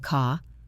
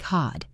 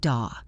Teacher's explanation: The vowel usually gets longer to make up for the missing R.